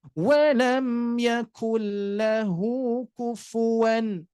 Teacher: Idgham itu adalah memasukkan ataupun idgham itu adalah menggabungkan dua huruf ya, menggabungkan dua huruf menjadi satu ya, yaitu masuk ke huruf lamnya diidghamkan, laguna tanpa didengungkan.